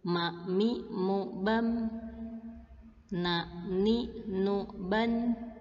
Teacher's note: tidak akan sempurna makhraj mim dan nun jika tidak ada suara yang mengalir dari rongga hidung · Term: makhraj khaisyum